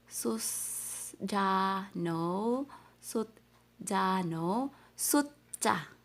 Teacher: S-U-S. sus, but the pronunciation is T.